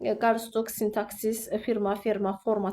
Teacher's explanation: sintaksis, firma, ferma, forma tipli sözlərdə vurğu birinci hecəyə düşür.